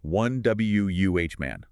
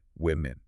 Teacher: In the plural form, even though it is written with an O, we pronounce it with a short I sound